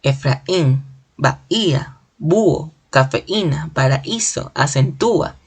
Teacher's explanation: la mayor fuerza de voz está en las vocales débiles, la U y la I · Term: hiato acentual